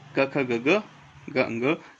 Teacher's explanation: कुवर्ग के अंदर ये पांचों वर्ण जो है वो कंठ से बोले जाएंगे